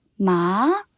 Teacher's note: the tone raises like you are asking a question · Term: second tone, Second tone